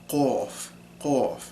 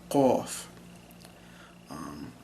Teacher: You kind of round your lips a little bit more when you say it, qaf. So yeah, it's like a really hard sounding like K sound, and it's further in the back of the mouth